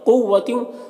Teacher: یہاں پر نون میں اخفا ہو رہا تو نون کی آواز کو ناک میں چھپا کر پڑھیں گے۔ قوتیوں، قاف حروف مستعلیہ میں سے پر پڑھیں گے